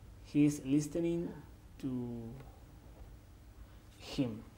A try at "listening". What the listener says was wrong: So said listening to. Con el verbo to listen, la T es muda. I know that you love, quieres mucho a las letras y quieres no pronunciarlas todas, sí, pero la T es muda.